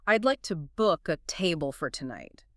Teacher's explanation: The words to, a, and for are quickly passed over, often reduced to the schwa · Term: sentence stress